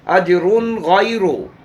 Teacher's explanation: नून तनवीन के बाद हुर्फ़ हल्की में से गैन है, यहाँ इजहार हल्की होगा। फिर रा पर पेश है, इसको मोटा पढ़ेंगे।